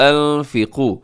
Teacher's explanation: انفقوا نون ساکن کی بعد فا، یہاں اخفا کیجیے گا.